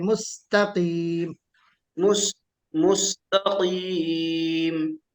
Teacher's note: مستقیم میں تا موٹا نہیں ہونا چاہیے، باریک پڑھیے